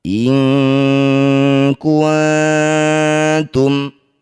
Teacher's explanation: Bunyi nun kita ganti jadi ang, dengungkan 2 harokat. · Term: ikhfa ab'ad